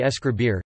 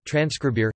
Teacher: an epenthetic /e/ is inserted before word-initial clusters beginning with /s/